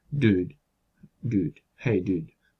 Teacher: Tendría que ir hacia atrás para hacer la U y volver otra vez hacia adelante para hacer la siguiente D. No tiene tiempo de hacer un recorrido tan largo, entonces esa U se queda más a medio camino, no llega tan atrás realmente. Entonces esa sería una U centralizada, que es la que se transcribe como U barrada, ¿no?